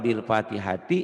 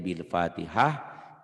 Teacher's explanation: Jika dihentikan bunyinya berubah menjadi ha. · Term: tak marbutoh